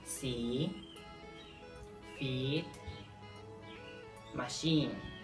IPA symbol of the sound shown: i: